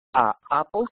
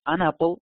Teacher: si tú dices A Apple, tienes que parar, pero si dices An Apple, no tienes que parar